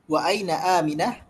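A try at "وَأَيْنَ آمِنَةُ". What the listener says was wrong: Jangan disukun. Wa aina aminatu, jangan disukun.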